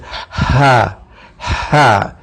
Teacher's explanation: حلق کے نیچے والے حصے سے ہا اور حمزہ ادا ہوگا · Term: اقصی حلق